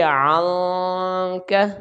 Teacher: نون ساکن کے بعد کاف حروف اخفاء کا آ گیا ہے تو اس کی آواز ناک میں چھپا کر پڑھیں گے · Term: غنہ